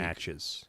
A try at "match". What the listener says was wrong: I don't like the way you say match. Why do you say it like matches? Like there's a W in there. Match.